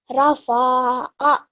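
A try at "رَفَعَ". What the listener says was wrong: Now you're not prolonging anything as fatha on top, so just 1 second. So here, what you did was rafa'a.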